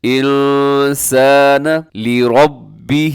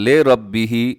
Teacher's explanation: لام زیر لی ہوتا ہے، لام زیر لے نہیں ہوتا